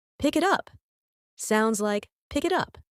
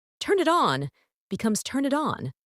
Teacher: the sounds are connected so it sounds like one long word instead of three separate ones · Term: linking